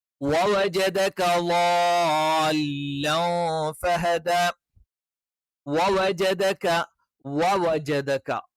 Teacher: വ എന്ന് പറയുമ്പോൾ രണ്ട് ചുണ്ടുകൾ വൃത്താകൃതിയിൽ വെച്ചുകൊണ്ട് തന്നെ നമ്മൾ ഉച്ചരിക്കണം.